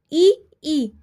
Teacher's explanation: इ ई तालू से बोले जाते हैं तो ताल वर्ग हो गया